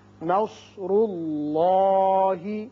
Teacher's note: اس میں اللہ جو ہے اس کے اندر جو لام ہے یہ پر پڑا جائے گا، اس لیے کہ پہلے پیش ہے · نون باریک ہوگا، صاد پر ہوگا، را بھی پر ہوگا، اس لیے کہ اس کے اوپر پیش ہے.